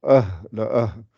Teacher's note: ça sort par le fond de la gorge donc c'est un son grave